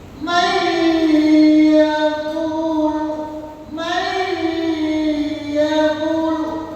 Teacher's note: Contoh kenapa idgam guna masuknya rakaat itu ternyata qori-qori yang ahli qori ahli-ahli qiraatah dalam mengambil cengkok itu dibangun dia guna mayquul may yaquulu masuknya lama nun mati di dalam idghamnya masuknya lama